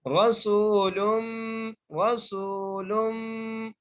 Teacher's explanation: रा को मोटा करके पढ़ेंगे, सीन को वाव से मिलाकर और सीन को एक अलिफ की मिलाकर खींच के पढ़ेंगे। रसूलुम रसूलुम, लाम को मीम से मिलाकर पढ़ना है और मीम पर गुन्ना करना है।